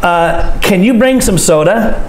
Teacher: Our voice goes up and we stop talking for a moment before we begin the next sentence.